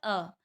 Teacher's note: मध्य स्वर आ बोलेंगे, ना आगे जा रही है जीभ ना पीछे जा रही है